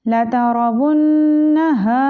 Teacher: वुन, मुशद्दद नून है तो नून पे हम गुन्ना करेंगे। हा को लंबा करेंगे क्योंकि ये अलिफ मद्दा है।